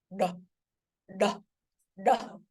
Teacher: retroflex cerebral which is curl of the tongue to touch the roof of the mouth